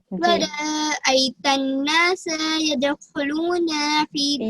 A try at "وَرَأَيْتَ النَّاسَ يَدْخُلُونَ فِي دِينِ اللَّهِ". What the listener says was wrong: یہاں پر حرف را کو موٹا پڑھا جائے گا. ورا، ورا نہیں پڑھیں گے. ورا، ورأيت الناس.